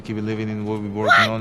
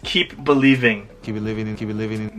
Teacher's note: It was very hard for me to hear the P and the B sound in there.